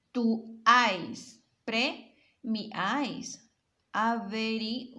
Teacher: Una vocal abierta en el medio de dos vocales cerradas. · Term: triptongo